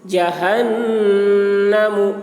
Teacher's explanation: نون مشدد ہے، نون میں غنہ ہوگا، یعنی نون کی آواز کو ناک میں لے جا کر گنگنائیں گے